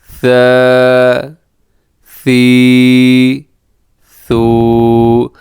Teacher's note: ثا میں سیٹی نہیں ہے، تو کوشش کرنی ہے کہ یہاں پر اس میں سے اس حرف میں سیٹی کی آواز نہ ہو۔